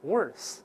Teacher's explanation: 第一个是清辅音，慢慢来，▁worth，▁注意吐舌头